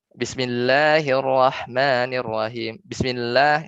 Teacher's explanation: Jadi ba-nya itu khofa ya, ba-nya itu khofa samar. Sedangkan kesempurnaan harokatnya di kasroh bi gitu kan.